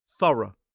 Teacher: This word has two syllables, stress on the first.